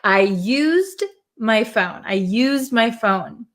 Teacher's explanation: When we add the D for something that you have used already, we're going to say used. It's going to have a Z sound.